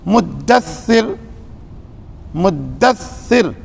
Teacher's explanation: اسے چاہیے کہ سختی کے ساتھ اس سا کو ادا کرے، دو مرتبہ معلوم ہو کہ سا ادا ہو رہی ہے